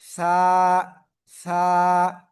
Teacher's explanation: জিহ্বার আগা উপরে দুই দাঁতের আগার সঙ্গে লাগিয়ে উচ্চারণ করতে হবে, ঠিক আছে? নরম আওয়াজে হালকা বাতাস বের হতে হবে কিন্তু, না হলে হবে না।